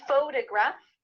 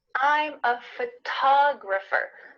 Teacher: the first syllable is emphasized here